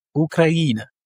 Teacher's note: Ici, l'accentuation est sur le I et on a quatre voyelles, donc quatre syllabes